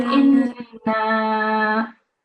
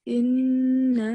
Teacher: So here you have to have, first of all, 2 seconds nasal sound on the Noon Mushaddad. Then you also have to have 4 seconds elongation.